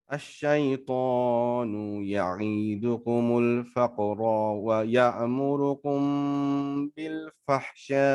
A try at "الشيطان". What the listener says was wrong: হ্যাঁ এখানে টান দিয়েছেন আইনে, টান এখানে নেই, অথচ ধরতে পারলেন না, তাহলে কেমন হলো?